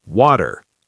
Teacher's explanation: In American English, water, almost like the t becomes a soft d sound